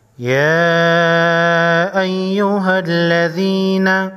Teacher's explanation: چھوٹی مت کو 3 الف کے مقدار یعنی 3 سیکنڈ لمبا کریں گے